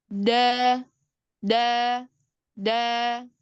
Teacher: ujung lidah yang bertemu dengan tempat tumbuh gigi seri atas · dia punya sifat syiddah yaitu tertahannya nafas kebalikannya daripada hams tadi maka ketika mengucapkan huruf Dal ini harus tegas kuat jelas da